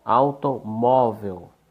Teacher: Automóvel, ou a sílaba tônica, mó, penúltima, paroxítona.